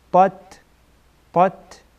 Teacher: یک تا از حروف استعلا هست، پر خوانده میشه، تا از حروف استعلا نیست، پر خوانده نمیشه